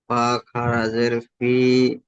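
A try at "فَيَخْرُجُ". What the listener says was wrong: ফা খারাজের নয়, ফা ইয়া খারাজের আছে ভাই। আর খারাজের নেই, ফা ইয়াজের ফি। দেখে পড়েন। কোথায় ইয়া পেশ উ কোথায় রয়েছে? একটু দেখে পড়েন। ফা ইয়াজের ফি, এই তো হয়ে যাচ্ছে। ইয়ার উপর সাকিন রয়েছে, ইয়া সাকিনের ডান দিকে জের ইয়া মাদ্দা।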